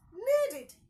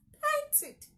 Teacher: such words are pronounced as id and not ed. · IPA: /ˈwɒntɪd/